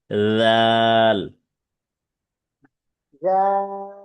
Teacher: জিহ্বার আগা সামনের উপরে দুই দাঁতের আগার সাথে লাগবে।